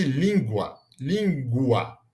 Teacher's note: que tem o a semivogal u junto com a vogal a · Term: ditongo crescente